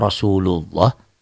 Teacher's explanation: lafadz Allah ini dibaca tebal berbunyi Oh · Lafaz Allah ini dibaca tebal, berbunyi O, Rasulullah, terjadi apabila sebelum lafaz Allah ada huruf yang berbaris di atas tuh.